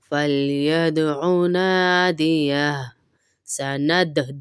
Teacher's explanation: सनद दाल पे कलकला करेंगे